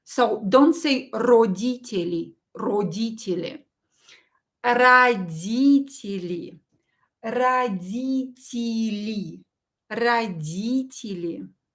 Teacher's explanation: O is pronounced as a and ye as e